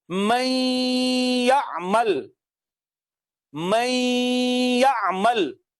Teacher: نون کو یا میں مدغم کرتے ہیں اور دیکھتے ہیں کہ ناک میں آواز گئی ہے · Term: ادغام بالغنہ